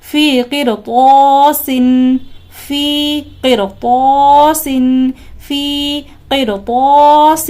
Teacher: را ساکن کے بعد بھی حروف مستعلیہ میں سے طا ہے، اور را ساکن کے پہلے بھی حروف مستعلیہ میں سے قاف ہے، لہٰذا اس را کو بھی ہمیں پر پڑھنا ہے · الف سے پہلے پر حرف ہے یعنی طا جو کہ پر حرف ہے، تو اس الف کو بھی ہمیں پر پڑھنا ہے